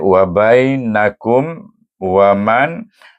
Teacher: Kum dengan wa. Tak ada dengung bacaannya. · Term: Izhar syafawi